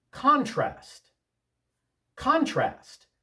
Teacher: with the accent on the first syllable, that's a noun.